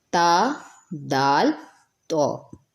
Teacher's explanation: زبان کی نوک اور اوپر سامنے کے 2 دانتوں کی جڑ سے تو ادا ہوتا ہے، تا دال تو، ان تینوں کا مخرج سیم ہی ہے۔